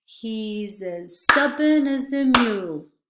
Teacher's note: We stress stubborn and mule.